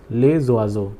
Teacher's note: S will get connected to this O and the pronunciation will be zo. Les oiseaux. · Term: liaison rule